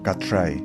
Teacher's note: por la presencia de la t en el primer momento del sonido que articula con la r en el segundo momento